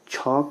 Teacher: छ का उच्चारण स्थान है तालू